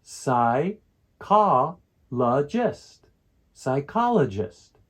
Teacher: the second syllable is the one that we stress for this word psychologist